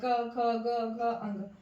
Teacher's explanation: क वर्ग कंठ से बोला जाता है